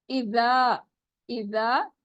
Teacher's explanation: ذا نرمی سے پڑھیں گے اور الف مدہ ہو رہا ہے, 2 کاؤنٹ اسٹریچ کریں گے